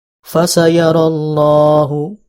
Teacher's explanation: huruf lam dibaca tafkhim karena ada lafaz Allah